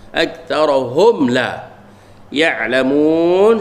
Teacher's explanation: Hak ni pun senang je kita kenal sebab selepas pada mim mati, selepas pada mim mati tak ada ba, tak ada mim, mana izhar syafawi jangan dengung